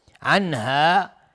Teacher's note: ولم یجدوا، میم ساکن بهش یا اظهار شفوی. عنها، نون ساکن بهش های دو چشم اظهار حلقی